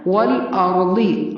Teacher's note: والارضی، واو پر منہ کو گول کرنا ہے. والارضی، را کو پر پڑھنا ہے، ضاد کو بھی پر پڑھنا ہے